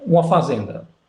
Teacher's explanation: E até hoje em dia, quando menos no Brasil, não sei em Portugal, mas no Brasil, se você pegar uma conversa meio coloquial, né, com falas mais populares e tal, você vai escutar esse uma como se fosse esse U e o A nasalizados, mas sem M